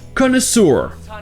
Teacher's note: Mais comme on l'a vu, beaucoup d'anglophones vont prononcer le EU comme OU, ce qui donne connoisseur.